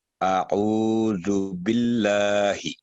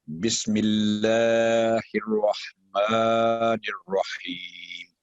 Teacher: جب بھی اللہ کے نام سے پہلے حرف کے نیچے زیر ہوگی, کسرہ ہوگی, تو باریک آواز میں